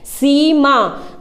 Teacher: सीमा को हमें बोलने में थोड़ा समय लग रहा है, खींच के बोला जा रहा है सीमा। तो कौन सी, बड़ी ई की मात्रा है।